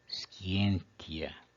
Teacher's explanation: A penúltima sílaba, que é o ti, é breve, portanto o acento vai para a antepenúltima.